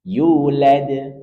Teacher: Ada dal di akhir kata. Maka tetap kita perhatikan sifat qalqalah pada huruf dal. Yulad, pantulkan dan kembalikan ke makhrajnya.